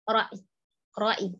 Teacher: Tapi ya sukunnya ditipiskan. Ya-nya tetap disukunkan, tapi dia samar saja. Ya, jadi yang lebih tegas hamzahnya ro'i.